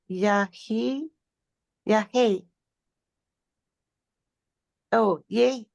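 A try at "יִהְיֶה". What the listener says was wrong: Yay. properly it should be yay. That's a consonantal hey. Yay. But nobody says that. In modern pronunciation, it's yay.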